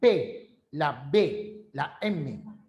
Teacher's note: momento en que un órgano choca con el otro por ejemplo chocan los labios el sonido es bilabial